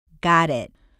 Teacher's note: notice the open ah sound of gah the way the tip of your tongue flicks on the bumps of the top of your mouth and the fact that the air doesn't pop out at the end of the word